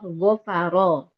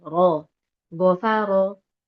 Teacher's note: Yang dibaca tebal pertama huruf ro yang berharokat fathah